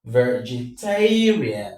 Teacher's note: The last syllable is rian. The one before it is tay. Vegetarian. The stress falls on tay.